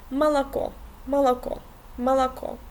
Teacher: It's something in between actually o and a